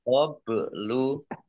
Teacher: Min qablu nun sukun bertemu dengan huruf qaf bacaan ikhfa dibaca samar-samar. Ba sukun bacaan qalqalah dibaca memantul ditampakkan pantulannya